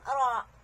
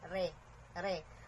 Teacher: Ang, ang ro, pagka-fathan, ro, makapal. Pero pag ang vowels niya ay kasran, hindi mo siya pwedeng gawin na re, re, hindi pwede. Kailangan na manipis lang.